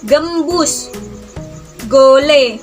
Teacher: velar Karena yang dihasilkan di bagian pangkal lidah dan langit-langit lunak